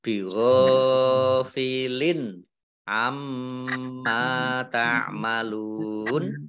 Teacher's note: mim tasdid, bacaan gunnah, dibaca mendengung, ditahan 2 harokat. Mim fathah alif mat tabi'i, panjang 2 harokat.